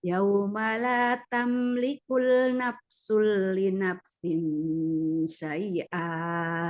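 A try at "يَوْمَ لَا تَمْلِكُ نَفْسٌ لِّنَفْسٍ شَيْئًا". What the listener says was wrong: Tapi berhenti karena ada yang salah. Tamliku nggak ada, bukan tamlikul tapi tamliku nafsul li nafsin syai'a.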